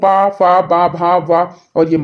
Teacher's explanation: इनके उच्चारण में दोनों ओष्ठों का प्रयोग होता है